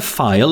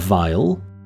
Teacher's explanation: the only difference between the sounds is that of voicing